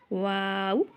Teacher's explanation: एक दफ़ा होंठों को गोल करेंगे, फिर अलिफ की आवाज़ वाव, ठीक है, फिर आखिर में गोल। पहले गोल करना है, होंठ आगे लेके आने हैं, फिर पीछे और गोल